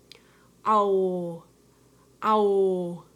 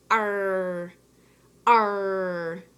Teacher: my lips are gonna be wide my tongue is gonna be far back